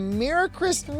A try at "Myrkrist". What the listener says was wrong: Myrkrist. You just gotta roll your R's a little harder.